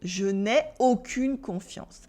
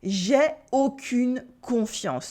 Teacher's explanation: in spoken French, negative sentences often lose their negation, this mark of negation, which is le ne, or n apostrophe. So he actually says j'ai aucune confiance to mean I have no trust. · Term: The ne has disappeared